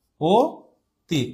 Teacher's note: অ এর সংবৃত উচ্চারণ হচ্ছে ও এর মতো। যেমন যে আমরা অনেক সময় বলি না অতি, বাট আমাদের স্পেলিং এ এখানে অ থাকে, অ থাকার কারণে এখানে উচ্চারণের সময় এটা ও তি এরকম উচ্চারিত হয়।